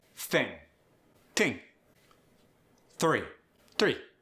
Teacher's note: Let's start with that TH becoming either a T or a D. It becomes a T when it's voiceless.